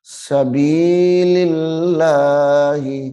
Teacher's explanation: جلالت اللہ کا لام یہاں پہ بھی باریک ہو رہا ہے، موٹا نہیں کرنا اس کو